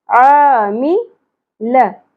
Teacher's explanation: अलिफ हरफ मदा है एक अलिफ के बराबर खींचेंगे